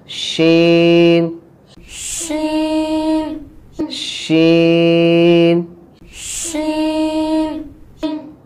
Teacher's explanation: शीन जो है इसमें आवाज़ फैलेगी, इसमें तफशी है